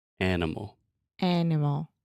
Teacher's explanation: So the middle sound, are you recognizing the pattern? The schwa occurs in that unstressed middle sound.